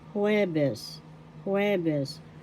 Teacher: The accent is on the first syllable, jueves.